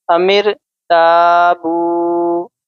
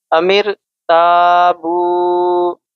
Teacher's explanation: تا ایک الف کے برابر کھینچ کر بولیں گے ، بو اس کو بھی ہم ایک الف کے برابر کھینچیں